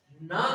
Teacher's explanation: ना का उच्चारण दंत भी होगा और प्लस नासिका भी होगा।